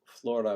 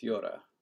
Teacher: So never mind, this is Russian. But like in Italian, L becomes ya after a consonant before a vowel